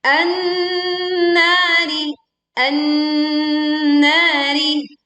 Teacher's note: kita langsung meleburkan alif lamnya ke nun sehingga dia dibaca dengung yang sempurna karena nun bertasydid